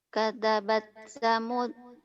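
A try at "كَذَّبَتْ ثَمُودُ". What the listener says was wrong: Kadzabat, ada tasdid, hati-hati. Kadzabat. Kadzabat Thamud bitagwaha.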